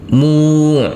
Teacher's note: Kita uraikan dulu. Di sini huruf ain sukun harus ada aliran sedikit